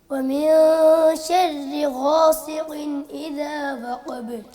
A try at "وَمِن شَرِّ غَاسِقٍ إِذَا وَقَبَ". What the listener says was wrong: غاسق سین ہے, سین کی آواز باریک ہے. غاصی سی یہ صاد کی طرح نہیں پڑھنا اس کو. غاسق غاسق.